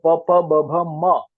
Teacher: म बोलते हैं तो दोनों ओठ जुड़ जाते हैं। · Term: ओष्ट